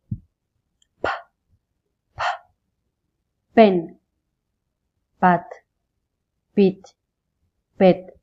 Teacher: won't feel any vibration because P is an unvoiced consonants